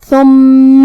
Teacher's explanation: کلمت ثم میں یہاں حرف الثا ہے. ثا کو ہم زبان کے سر اور اوپر والے دانتوں کے اندرونی کناروں سے ادا کریں گے، جو کہ میم پہ تشدید ہے، لہذا 2 حرف کے برابر ہم حرف المیم کو پڑھیں گے.